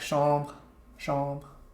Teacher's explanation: when the R is with another consonant, it becomes stronger, but not in the word chambre